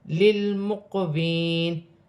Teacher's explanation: لام ساکن ہے, لام کو لام کے ساتھ ملا کر پڑھا جائے گا. قاف حروف قلقلہ میں سے ہے, تھوڑا قلقلہ پیدا ہو.